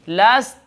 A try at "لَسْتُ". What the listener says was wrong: بھائی تا کی آواز نہیں سنی آپ نے لست تھوڑی سی تھ نہیں